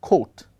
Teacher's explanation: we pronounce the word as coat by aspirating the initial k sound